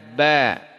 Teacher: dari dua bibir ditekan. Ba, ya, tidak keluar napas. Dia bukan huruf tebal, huruf tipis.